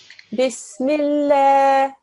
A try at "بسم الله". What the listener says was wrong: Okay, try and make that lam a little bit thinner.